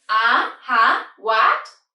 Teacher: obviously is from low to high so it's a go up tone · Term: second tone